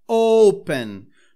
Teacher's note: percebam que a sílaba tônica está no O